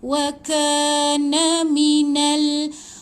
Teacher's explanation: Wa ka panjang ada 2 harakat, ada alif kat lepas ni. Na minal. Ingat baca Al-Quran pergerakan ke depan, na mati dengan lam.